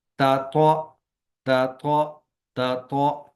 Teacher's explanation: یعنی تا باریک ہوگی اور تو موٹا